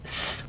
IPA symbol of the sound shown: s